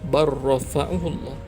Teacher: Contoh yang ketiga, bal dan selepasnya ada huruf ra, maka dibaca dengan barrafa'ahullah. Lam dimasukkan ke dalam huruf ra. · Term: idgham